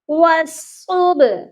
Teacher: واو صاد زبر وس، صاد با پیش صب، والصب۔ ادھر با پر قلقلہ لازمی کرنا ہے کیونکہ با ساکن ہے